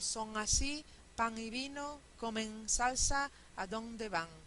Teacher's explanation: y esto no pasa absolutamente en todas pero es bastante común la n a final de sílaba a menudo simplemente se convierte en velar y no importa lo que venga detrás · no habría asimilación en el punto de articulación simplemente la n se velara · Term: Velarización